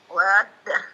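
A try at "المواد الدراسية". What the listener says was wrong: Nah, mawaddad dirasiyah. Tapi panjangnya enggak mesti 6 harakat ya. Di bawah 6 harakat 2 harakat enggak masalah, nah.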